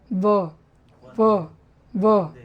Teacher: वंदे ब की तरह रहेगा, लेकिन वो दोनों ओठ नहीं सटेगा, एक दांत और ओठ सटेगा। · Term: दंतोष्ठम